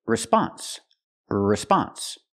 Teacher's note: the stress is on the second syllable not the first